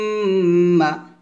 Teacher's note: আইনটা গলার মাঝখান থেকে চাপ দিয়ে নিয়ে আসবেন। আম্মা এখানে অবশ্যই গুণ হবে।